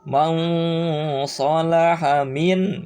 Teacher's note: samarkan nun sukun dan tanwinnya jadi berbunyi bukan n bunyinya tapi antara n dan eng. Caranya ketika man membaca man adalah tempelkan ujung lidah ke ujung gigi bawah.